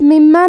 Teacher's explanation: میم پہ تشدید ہے تو ہم یہ حرف کو دو حرف کے برابر پڑھیں گے، کیونکہ تشدید کی اصلیت دو حرف ہے.